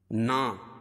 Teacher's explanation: کھڑا زبر قائم مقام الف مدہ کے اس کو ایک الف کے برابر کھینچ کے پڑھیں گے